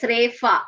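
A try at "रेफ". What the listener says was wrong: Repa, Repa. Fa is not there in Sanskritam.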